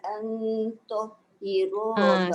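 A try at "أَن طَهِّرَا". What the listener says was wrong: Dekat nun bertemu dengan ta tu kena tebal. Dia tak boleh dia tahira. Cuba ulang balik.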